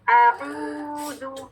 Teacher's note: عین کا مخرج عام الحلق, مخرج خاصہ عین, مخرج خاصہ وسط الحلق. وسط الحلق یا مڈل آف دا تھروٹ, یہاں سے عین ادا ہوگا